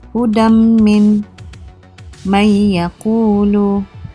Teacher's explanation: Cara bacaan hendaklah dibaca dengan dengung 2 harakat. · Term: idgham ma'al gunnah